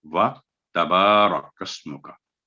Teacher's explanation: ता पर स्ट्रेस नहीं देना, तशदीद नहीं है, व तबारा कस्मों का, रा को पुर करके पढ़ेंगे।